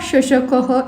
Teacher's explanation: When I am pronounced, the middle part of tongue slightly touches the madhya talu means middle palate. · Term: तालव्य